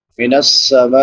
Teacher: میم پہ مد متصل ہے، حمزہ اسی کلمہ میں ہے، 3 سے 5 الف کے برابر اس کو لمبا کریں گے۔